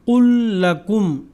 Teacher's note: یعنی 2 ایک ہی جیسے حروف کو ملا کر مشدد پڑھنا ادغام مثلین کہلاتا ہے۔